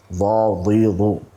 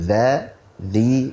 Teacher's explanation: Maka huruf dzal tidak ada aliran nafasnya, akan tetapi yang mengalir adalah suaranya.